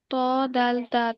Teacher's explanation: জিহ্বার আগা উপরের পাটির সামনে দুই দাঁতের গোড়ার সঙ্গে লাগিয়ে